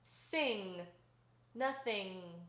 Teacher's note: you're going to drop the rest of your soft palate and send the sound through your nose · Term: velar nasal